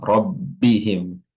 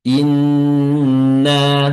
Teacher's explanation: huruf kedua huruf ini keluar dari alkhaisyum atau rongga hidung itu memiliki durasi yang lebih lama daripada huruf tasydid yang lain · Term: tasdid pada nun dan mim